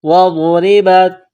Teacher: غاد کو موٹا کرنا ہے، را کو باریک کرنا ہے ، را کے نیچے زیر ہے، با کو تا کے ساتھ